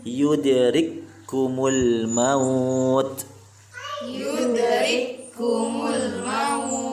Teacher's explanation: K yang pertama dimasukkan kepada huruf yang kedua tanpa kita baca yudrikku. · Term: idgham kamil